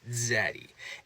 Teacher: some people were naturally saying zad right with a d kind of rolling into that Z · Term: affrication